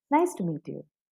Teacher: when i say nice to meet you so it it's a falling tone